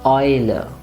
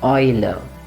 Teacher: remember the pronunciation is oi, and it's a nice long oi